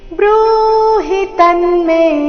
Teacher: ತನ್ಮೆ ತಮೇಲೆ ಆಘಾತ ಮೇ ದೀರ್ಘ